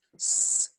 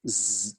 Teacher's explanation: the z is the same thing as an s s z we're just turning the vocal chords on that's all we do just activate the vocal chords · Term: voice consonant